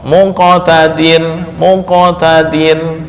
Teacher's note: maka qalqalahnya lebih dekat ke bunyi dommah